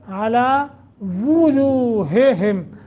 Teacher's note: دونوں جگہ ہا ہدئی ہے، ہا ہدئی جو سینے کی طرف، جس کا مخرج ہے اقصائے حلق، اقصائے حلق، हल्का वो हिस्सा जो सीने की तरफ से है।